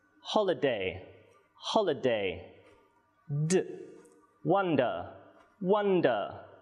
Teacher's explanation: the d sound is a voiced consonant. You make this sound with your voice box. When you pronounce the sound and touch your throat at the same time, you will feel a vibration in your voice box. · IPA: /d/